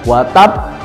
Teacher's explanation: qalqalah kubro yang akhirnya ada huruf tasdid dan di akhir kalimat diwakafkan. Jadi pantulannya sangat kuat.